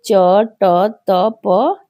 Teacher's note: जिनके उच्चारण में स्वर तंत्रियां कंपित नहीं होती है उसे अघोष वर्ण कहते हैं